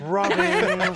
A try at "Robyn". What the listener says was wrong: More nasal, please.